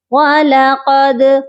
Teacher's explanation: قاف کو موٹا کریں گے، اور دال جو ہے حروف قلقلہ ہے، اس پر ہم آواز کو ڈبل کریں گے۔